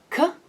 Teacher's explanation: i stop the airflow in the back of my palate an area we call the villum and therefore k is a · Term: velar consonant